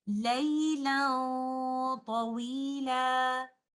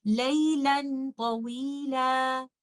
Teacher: So, we will do ikhfa here. We will hide the oral part of noon sakinah, only give the ghunnah, and because of taa is a heavy letter, our ghunnah will be heavy. · I will not touch my tip of the tongue with the roof of the mouth, and I will only give ghunnah of noon sakinah.